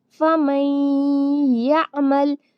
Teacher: نون کی جو آواز ہے یہاں پر سائلنٹ ہو جائے گی اور میم کو یا سے ملائیں گے